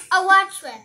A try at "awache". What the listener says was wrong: No, it's chi. It's not awadre. It's awache. No, awache. It's awache.